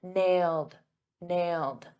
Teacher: notice in the past simple that ed is a very soft D.